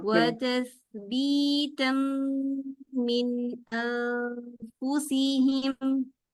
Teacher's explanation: जब मीम शद्दा है तो आवाज पूरी नाक में जाए